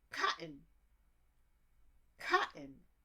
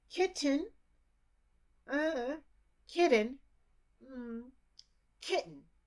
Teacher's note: There's not even a D sound or a T sound in there. It's just a blank sound.